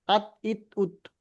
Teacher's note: সামনের উপরের দুই দাঁতের গড়ার সাথে লাগিয়ে উচ্চারিত হয়। দুইটা দাঁতের গড়ার সঙ্গে মানে গড়ার সঙ্গে লাগিয়ে উচ্চারিত হয়।